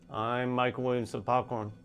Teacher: The first syllable is drawn out suggesting that the speaker is in the middle of solving some problem while also engaging in the problem being solved with the communication. · the highest tone falls on I'm